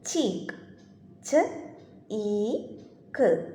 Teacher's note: the front of the tongue is raised towards hard palate. The tip or blade of the tongue and the front of the tongue are the active articulators and teeth ridge and hard palate are the passive articulators.